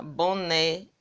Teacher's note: Então, aqui a oxítona. Boné, a sílaba mais forte é né.